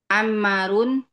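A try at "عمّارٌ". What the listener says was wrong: Ma panjang. Ammarun. Panjang pendeknya perhatikan ya. Ammarun.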